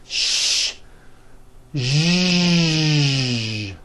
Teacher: let's work on the voiced sh sound to produce this sound first make a sh sound and then you add voicing